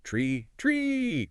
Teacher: if your tongue stays behind your teeth, like tucked inside, you get the tay sound